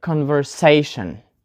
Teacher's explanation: So we put the stress on the syllable say because the word ends in letters T-I-O-N, shin. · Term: penultimate syllable